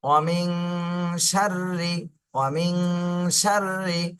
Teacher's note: ওয়ামিং, শিন র জবর সার, র জের রি, সার রি। র কিন্তু চিকন করে পড়তে হবে, র নিচে জের, চিকন করে পড়তে হবে।